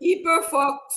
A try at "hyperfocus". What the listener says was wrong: Hyperfocus. Hyper... É com H, tá? HY. Hyper.